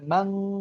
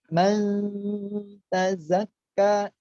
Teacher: Nun sukun bertemu dengan ta, persiapkan samar-samarnya itu masuk, persiapkan ke huruf ta.